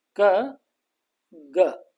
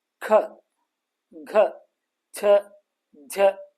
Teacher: ಕ ಗ ಅನ್ಬೇಕಾದ್ರೆ ಕಡಿಮೆ ಉಸಿರು ಹೊರಗೆ ಬರ್ತದೆ ಖ ಘ ಅನ್ಬೇಕಾದರೆ ಹೆಚ್ಚು ಉಸಿರು ಹೊರಗಡೆ ಬರ್ತದೆ ಹೀಗಾಗಿ ಹೆಚ್ಚು ಉಸಿರಿನಿಂದ ಉಚ್ಚರಿಸುವಂತ ಅಕ್ಷರಗಳು ಮಹಾಪ್ರಾಣಗಳಾದರೆ ಕಡಿಮೆ ಉಸಿರಿನಿಂದ ಉಚ್ಚರಿಸುವಂತ ಅಕ್ಷರಗಳಿಗೆ ನಾವು